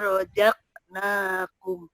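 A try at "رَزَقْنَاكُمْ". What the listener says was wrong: Bukan rojak. Bukan rojak, tapi roza, za. Roza, za. Tipis.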